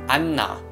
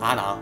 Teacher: So technically, the “n” sound is doubled. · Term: strong “n” sound